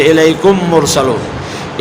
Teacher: دونوں میمیں ایک ہو جائیں گی، اور مثل ایک میم مشدد کے اس میں غنہ ہوگا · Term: ادغام صغیر مثلین